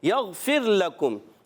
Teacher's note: یغفر لکم، یہاں یا کو غین سے ملانا ہے، غین کو ہلانا نہیں، غین حرف مستعلیہ میں سے موٹا کر کے پڑھیں گے، اور پھر لکم، فا کی ادائیگی اوپر والے دانتوں کے کنارے جب نیچے والے اٹھ کے تر حصے سے لگتے ہیں تو ادا ہوتا ہے فا، اور فا کو را سے ملانا ہے۔